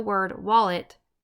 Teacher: in the word wallet we emphasize or stress the first syllable wall and not the second syllable